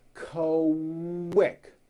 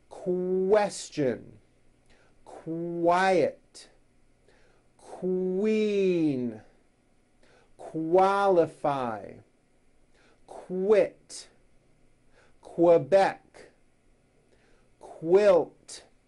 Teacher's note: the word quick is pronounced with a K and a strong W sound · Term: Q sounds